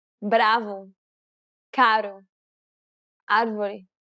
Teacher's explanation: English speakers can sometimes pronounce this sound when saying the word better or butter quickly and lazily. The key here is to make sure that the tongue strikes the gum ridge very, very quickly. Striking in a down-up fashion may help to pronounce this sound.